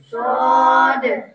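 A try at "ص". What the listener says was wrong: स्वाद नहीं है, स्वाद मोटा पढ़ना है, स्वाद मोटा स्वाद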